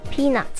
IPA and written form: ˈpiː.nʌt (peanut)